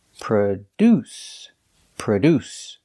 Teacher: produce produce is a verb it means to make or manufacture products pronunciation produce we put the stress on the second syllable produce produce the first syllable is pronounced with a relaxed H